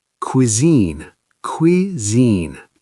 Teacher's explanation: Two syllables, stress on the second.